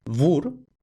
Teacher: en polaco, igual que en alemán, lo que se escribe con W realmente se pronuncia con V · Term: fricativa V